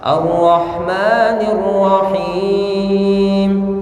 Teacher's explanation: Huruf ra memiliki sifat tarqiq, yaitu ada pengulangan, ada getaran, tapi tidak banyak, cukup sekali, ya. Jangan ar-rahmanir, ar-rah itu kebanyakan.